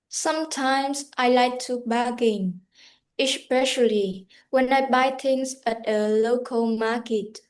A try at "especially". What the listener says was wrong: Okay, can you say especially, not shush, especially, especially, not esh, s, especially.